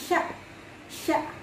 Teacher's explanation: Shin itu ketika kita ucapkan itu berada di tengah-tengah lidah, sya, sya. Itu kita kasih kode tengah lidah, T.